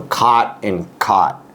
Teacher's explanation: with my generation, I think most everybody, at least in California, they say it is the same word. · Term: cot merger